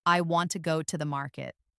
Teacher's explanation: the stressed words are want, go, and market. The smaller words like I, to, and the are less stressed. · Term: sentence stress